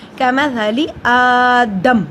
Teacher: دال جزم کی صورت میں ہے، اس پہ قلقلہ ہوگا · حمزہ پہ کھڑی زبر ایک الف کے برابر لمبا ہوگا